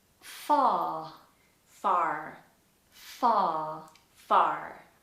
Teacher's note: in british english as i'm always telling you on my videos we have to flatten the r and in most cases we ignore it all together if it's not at the beginning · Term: the r sound